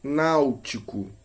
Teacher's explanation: Por exemplo, quando dizemos luva, repitam comigo, luva, pronunciamos a vogal U sem que haja qualquer interrupção para o ar. Mas quando pronunciamos a semivogal U em náutico, a boca que estava aberta em na termina fechada em nau.